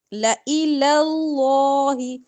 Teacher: لفظ اللہ کا لام موٹا پڑھنا ہے. لَإِلَى کا لام باریک ہوگا.